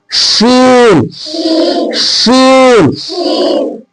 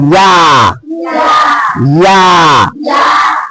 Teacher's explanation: जबान के बीज को कहां लगाना है ऊपर के तालु में चिपका देना है